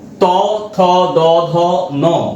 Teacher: আবার ত থ দ ধ ন, এইটা এই দাঁতের গোড়ায় গিয়ে উচ্চারিত হচ্ছে, জিহ্বার অগ্রভাগ স্পর্শ করছে দাঁতের গোড়া বা দন্তে স্পর্শ করছে, সেজন্য একে বলছি আমরা দন্ত ধ্বনি।